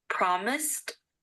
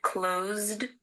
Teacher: promised and closed have an S before the Ed ending however promised has an S sound and closed has a z sound